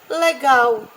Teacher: Sílaba tônica gal, sílaba átono lé